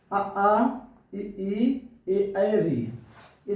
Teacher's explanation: जिनको बोलते समय हमारे ओठ गोलाकार ना हो उन्हें हम क्या कहेंगे? आवृत्त मुखी स्वर।